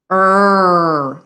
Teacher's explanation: have to make our tongue height tight like a muscle so if i do the bunching r my tongue is wide it touches the sides of my teeth like the e i bunch it to the back and i make my muscle tight and i say er like i'm going to growl but i